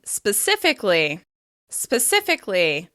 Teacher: As you can hear, there's a lot of /ɪ/ sounds in this word, and we're stressing the second syllable